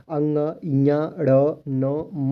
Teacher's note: अंग, ञ, ड़, न, म को नासिक व्यंजन बोला जाता है। इसका उच्चारण नाक से होता है।